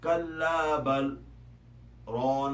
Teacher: اب چونکہ بل اور ران کے درمیان سکتہ ہے، اس لیے یہاں پر لام اور را کا ادغام نہیں ہوگا